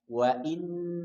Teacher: Dan dia bertasydid. Maka tahan 3 harokat. Wa inna. Tahan 3 harokat.